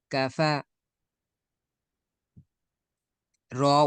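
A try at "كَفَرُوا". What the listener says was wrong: না, রু এখানে টানলেন কেন?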